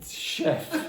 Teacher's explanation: this word is French and we actually don't pronounce it with a CH we pronounce it with a sh